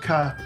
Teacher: The C, not just in Latin, but also in the Celtic languages, is pronounced “kuh” everywhere.